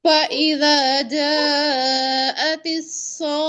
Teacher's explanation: مد کے بعد آپ نے تشدید بھی ادا کرنی ہے، لیکن خواہ کو لمبا نہیں کرنا، خواہ پہ مد نہیں ہے